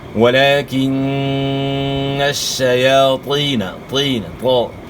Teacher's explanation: شین پڑھنا ہے، شین. طا جو ہے موٹے حروف میں سے، طا کو آپ نے موٹا ادا کرنا ہے. اور یا ساکن سے پہلے زیر ہے، یا مد ہے، ایک الف کے مقدار کے برابر آپ نے کھینچنا ہے.